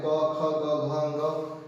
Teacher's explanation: ये कंठ से निकलते हैं और जिह्वा से वायु अवरुद्ध होते हुए जब निकलती है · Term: कंठस्य वर्ण